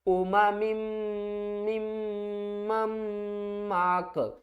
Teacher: यहाँ पर हम जब वक्फ करेंगे तो काफ को साकिन कर देंगे।